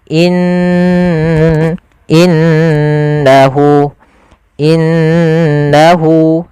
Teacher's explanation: Cara membacanya jangan langsung innahu tapi ditahan dulu ghunahnya. Dimasukkan ke rongga hidung kita.